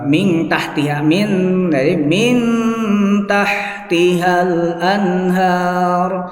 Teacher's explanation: min ada gunanya dan nunnya itu hampir dekat ke taknya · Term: ikhfa